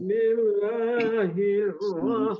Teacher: jadi bis bis itu mengalir atau sin ada sifat mengalirnya